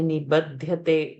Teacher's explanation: when we say nibadhyate, ba is to be alpa prana